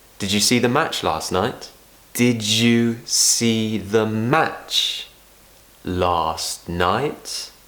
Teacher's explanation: usually in a yes/no question, we'll finish by taking the tone up. But also something else interesting that's happening is I'm not saying did you, I'm saying did you.